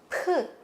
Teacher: P는 입술을 다물고 있다가 열면서 P 하는 발음 내거든요